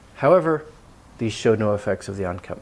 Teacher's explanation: however there's a slight rise